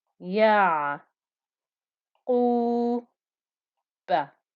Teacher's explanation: because of the time given to the ayn with the sukoon, you can hear the noise flowing somewhat through the ayn